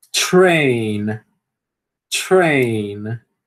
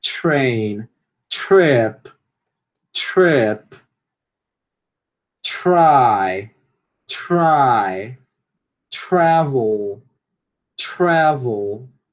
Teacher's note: Então dá para perceber que tem um chiadinho antes do re